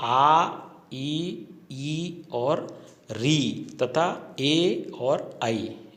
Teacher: तो उच्चारण के समय होठ गोल न खुलकर फैल जाते हैं। इन्हें अवृत्ताकार या अवर्तुलित या अवृत्तमुखी स्वर कहते हैं। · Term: अवृत्ताकार स्वर